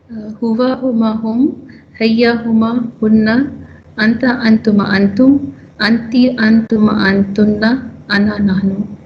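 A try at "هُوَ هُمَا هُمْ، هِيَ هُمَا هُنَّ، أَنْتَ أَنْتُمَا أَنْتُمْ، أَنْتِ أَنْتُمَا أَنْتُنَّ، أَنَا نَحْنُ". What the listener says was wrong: MashaAllah. Very good. Very good. Anti, amazing. You're amazing.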